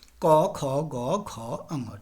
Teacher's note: क वर्ग का उच्चारण स्थान जिवा मूल भी हो गया और कंठ भी हो गया